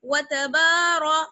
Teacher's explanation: تا با واو کو باریک, را کو موٹا